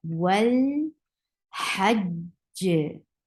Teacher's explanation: You will hold the sound when you are saying jim with ha, and then you are applying qalqala at the last jim.